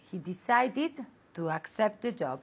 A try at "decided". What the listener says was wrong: Decided. It's not fast. It's an extra syllable. So don't say decided. It's decided. Okay, it's an extra syllable.